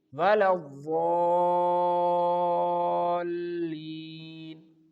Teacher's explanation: Here we have to stretch this word for 6 counts.